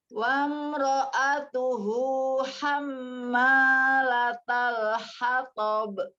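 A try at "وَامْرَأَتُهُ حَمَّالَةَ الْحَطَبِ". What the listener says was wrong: Wamro. Coba sempurnakan mimnya. nah, tidak wamro. Wamro'a. Ro'a. Wamro. Nah, ya, ketika dia domahnya maunya kan tuhu, gitu ya. Ya, gunakan mimnya ya, hatab. Tidak hatab. Nah, tidak hatab. Dibuka ya, huruf to itu tidak dengan memonyongkan bibir ya.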